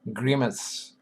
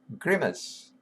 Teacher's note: accent is on the first syllable